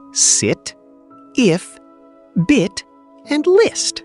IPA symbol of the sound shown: ɪ